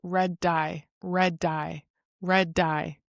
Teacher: So we have assimilation, which occurs in one sound when it causes a change to the neighboring sound. If you have two words in a row and you have a repeat sound, like red dye, for example, then you're going to pronounce this like it's all one word. Instead of saying red dye, you'll say red dye, red dye, red dye.